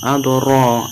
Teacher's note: ro-nya ini ro tafkim maka ditebalkan